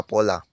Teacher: Misalnya pada kata pola, fonem P diucapkan secara lepas yang kemudian diikuti oleh fonem O.